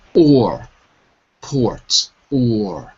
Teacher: In American English, if you're going for an American accent, it's not a vowel sound. It's a consonant.